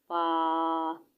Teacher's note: اوپر کے دانتوں کے کنارے اور نچلے ہونٹ کے تر حصہ سے ادا ہونا ہے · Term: حروف شفویہ